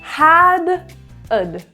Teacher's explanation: of this let's start when we contract had with other words we're reducing the length of the vowel kind of think of it like just an uh sound and get rid of the H